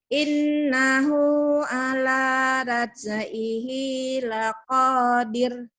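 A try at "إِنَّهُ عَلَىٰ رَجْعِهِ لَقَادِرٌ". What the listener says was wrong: Ro, tapi jangan ra ya, ro. Orang seberang ro-nya ra. Al-Baqarah, Al-Baqarah ya, ro. Loro, orang Jawa tuh dua tuh loro. Ro, bukan raj, ro. Ro.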